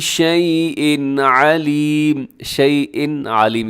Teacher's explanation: یہاں تنوین کے بعد عین حروف حلقی میں سے ہے تو یہاں پر اظہار حلقی ہوگا، یعنی آپ نے اس کو تیزی سے پڑھ دینا ہے، یہاں غنہ نہیں کرنا۔